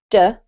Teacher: with the English D, your tongue is further back. It doesn't actually touch your teeth. So you should say, yeah, your tongue kind of curls up and touches the roof of your mouth so that you end up with a D sound. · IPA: /d/